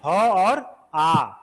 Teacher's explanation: स्वर यंत्रीय ह पूरा कंठ से आ रहा है, और आ कंठ से आवाज आ रही है ना